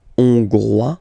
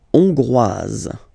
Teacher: final S not pronounced for the masculine form. And then you pronounce it here for the feminine form.